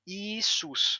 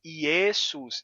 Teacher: em grego o som do e se tornou I